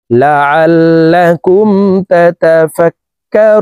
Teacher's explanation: জবর কা র ওয়াও পেশ রু তাতা ফাক্কারু নুন জবর না রু তিন আলিফ টেনে নুনকে সাকিন করতে হবে কারণ মদের হরফের বামের হরফে ওয়াকফ হইলে মুদ্দা আরজি তিন আলিফ টেনিয়া পড়িতে হয়